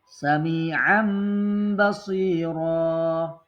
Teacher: nun atau tanwin pengeluarannya pada ujung lidah maka sulit ya maka ditukarlah suara nun sukun dan tanwin menjadi suara mim sukun